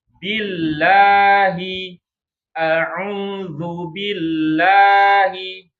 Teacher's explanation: Tapi ketika diawali dengan huruf yang berharokat kasroh, maka dibacanya lah atau tarqiq ya, tipis ya